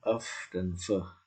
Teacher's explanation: Misalnya frikatif, ya, of dan f, ya, of dan f itu mesti labiodental, melibatkan bibir dan gigi